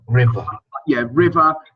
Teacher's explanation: you could work on the use of the schwa at the end of ER words